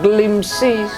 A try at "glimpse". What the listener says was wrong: S-E tak perlu sebut. Kita cuma glimpse.